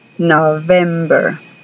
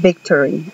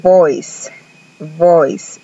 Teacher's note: la v labio dental lo que hacen es pegar los dientes de arriba a labio de abajo y dicen ve like in victory como en victory o o